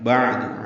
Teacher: عین ساکن اس پہ اظہار ہے، وسط حلق سے ادا ہوگا. دال کو جلدی پڑھنا ہے.